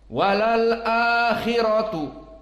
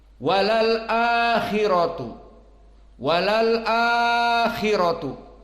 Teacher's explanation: di mad badal ini Hafs an Asim hanya membaca 2 harokat, walal akhiratu, walal akhiratu, 2 harokat.